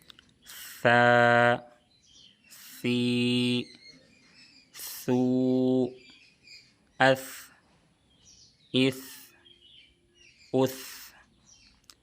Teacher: सा को बहुत नरमी से अदा करना है और याद रहे कि सा की अदायगी में सीन की तरह सीटी नहीं निकलनी चाहिए और जुबान की नोक को ऊपर के सामने वाले दोनों दांतों के बिल्कुल नोक पर लगाना है। · سا کا مخرج ہے زبان کی نوک اور ثنایا علیہ کا کنارہ۔ · سا کو بہت نرمی سے ادا کرنا ہے، اور یاد رہے کہ سا کی ادائیگی میں سین کی طرح سیٹی نہیں نکلنی چاہیے، اور زبان کی نوک کو اوپر کے سامنے والے دونوں دانتوں کے بالکل نوک پہ لگانا ہے۔